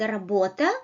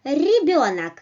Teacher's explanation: You touch hard palates, you touch alveoles with the back of your tongue, and you produce vibration like r, r, r, rim, rim, r, r. It may be a bit harder like r in the word работа, or it may be a bit softer like in the word ребенок, r, r, r. Well, so you don't need to put it too backwards or too forward.